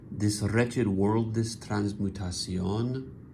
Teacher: in this case the cesura is after the fifth syllable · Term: medial cesura